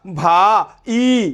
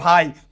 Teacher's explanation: এগুলোর ভিতরে যৌগিক স্বরধ্বনি আছে, এগুলোকে আলাদা উচ্চারণ করা যায় না, একবারে উচ্চারণ করতে হয়, এই জন্য এগুলোকে এক অক্ষর ধরতে হয়।